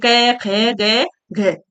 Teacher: ख बोलो कंठ से ध्वनि निकल रही है